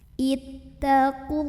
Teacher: Allah mad asli atau mad tabi'i karena ada baris fathah tegak di atas huruf lam, bacanya panjang 2 harokat.